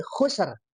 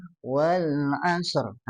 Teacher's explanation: Ada bunyi getaran karena huruf ro itu punya sifat takrir.